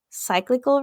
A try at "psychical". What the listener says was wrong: No, you said cyclical. I said cyclical. But cyclical would be like a cycle, like, and then you're adding an extra. you're adding an extra L.